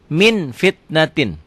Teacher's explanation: bila nun mati atau tanwin bertemu dengan Fa bunyinya berubah menjadi mm akan tetapi mutlak tidak tertutup rapat masih ada udara yang keluar · ada udara yang keluar ketika membacanya ikhfa iya ya Min fitnatin dibacanya jadi bunyi m tapi bibirnya kebuka sedikit bindeng tetap